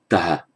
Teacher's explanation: note here the characteristic da, unaspirated da